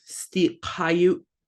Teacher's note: it's got a glottal stop at the end, so you're going to abruptly stop it.